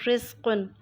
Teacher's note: رزقن کے را کے نیچے زیر ہے اس لیے را کو باریک پڑھیں گے۔ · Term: ترقیق را